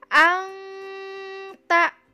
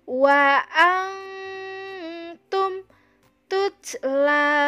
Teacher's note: Nun mati bertemu dengan ta, berarti itu namanya ikhfa, dibacanya samar dan dengung. Dan ditahan dua harokat ya